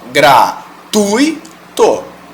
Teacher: ele é uma semivogal então ele não tem essa força para você pronunciar ele separadamente